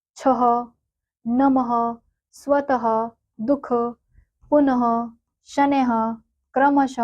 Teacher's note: विसर्ग का जो उच्चारण है वो हम ह के समान करते हैं।